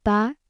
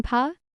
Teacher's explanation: Can you feel the difference between the soft ba and the puffing pa?